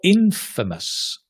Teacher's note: Or infamous, stress on the in